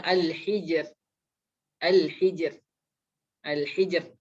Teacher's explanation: Al-hijr. Al-hijr, ro-nya dibaca tipis karena dia di situ hurufnya berbaris bawah.